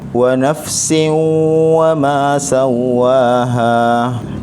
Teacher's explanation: Tanwin bertemu dengan huruf waw, jadi tanwin ini dia gabung terus masuk ke dalam huruf waw berserta dengan dengung. Idgham maksudnya gabung, ma'al gunnah maksudnya berserta dengan dengung. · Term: idgham ma'al gunnah